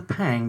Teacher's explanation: that's called a plosive and what that is is an explosive exhalation of air during a sound